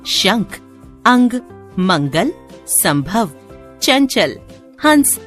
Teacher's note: अनुस्वार का उच्चारण नाक से होता है। व्यंजनों के वर्ग क, च, ट, त, प वर्ग के पंचम अक्षर के स्थान पर इसका प्रयोग होता है। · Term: अनुस्वार नेजल